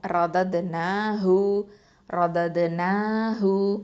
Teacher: அகசல் ஹல்க்கு கீழ் தொண்டையிலேருந்து வரணும்